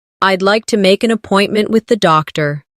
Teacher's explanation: Keep the stress on appointment so the listener understands the purpose.